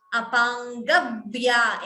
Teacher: Extra b is heard. B is doubling. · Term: dvitvam